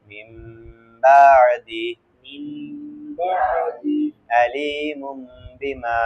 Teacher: বা আসিলে, ইকলাবের হরফ বা আসিলে, ওই নুনে সাকিন বা তানবিনকে ওই নুনে সাকিন বা তানবিনকে গুন্নার সহিত মিম পড়িতে হয়